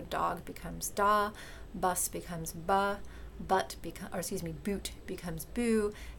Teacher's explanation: the final consonant in the word, that is the consonant at the end of the word, just doesn't get pronounced, it gets deleted. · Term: final consonant deletion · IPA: /dɑg/ —> /dɑ/, /bʌs/ —> /bʌ/, /but/ —> /bu/